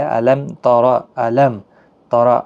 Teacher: یعنی میم ساکن کو بغیر گنہ کے پڑھا جاتا ہے، وہاں پہ آپ نے گنہ نہیں کرنا ہے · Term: اظہار شفوی